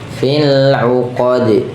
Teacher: Kemudian fil uqad, fil uqad, dan sama juga termasuk huruf qalqalah, dia kalau dimatikan, kalau diwakafkan kemudian dimatikan jadi mati dan mantul